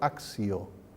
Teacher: la I esta es una yod que afecta a la T y se pronuncia esto axio.